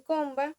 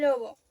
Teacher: una ve oclusiva como en comba o fricativa como en lobo son sustituibles.